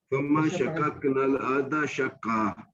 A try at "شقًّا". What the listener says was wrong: شقا قاف پہ جو ہے نا شد بھی ہے، شقا.